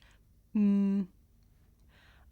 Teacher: I make this sound by closing my lips and letting the sound come through my nose I can even feel my nose vibrating